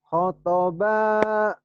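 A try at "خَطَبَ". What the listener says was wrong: Khonya panjang. Khonya panjang. Baknya panjang. Tekan-tekan yang panjang. Khotoba.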